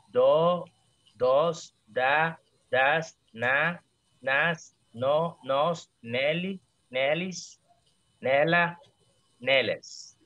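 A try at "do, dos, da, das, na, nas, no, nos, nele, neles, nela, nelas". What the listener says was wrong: Perfeito.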